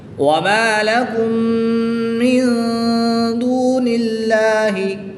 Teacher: میم ساکن کے بعد دوسری میم آ جائے تو یہاں پر ادغام شفوی ہوگا، غنہ کر کے پڑھیں گے